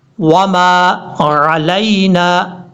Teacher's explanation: عین کو کلیئر کرنا ہے، حمزہ کی آواز نہیں آنی چاہیے · لام کو یا سے کنیکٹ کرنا ہے، یہ یا بھی لین ہے، مدہ نہیں ہے، اس کو لمبا نہیں کریں گے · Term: یا لین